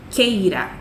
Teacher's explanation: Esse U a gente não está ouvindo.